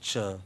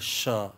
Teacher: If the tongue rises towards the hard palate, touches it, we get Ch. If it doesn't, we get Sh.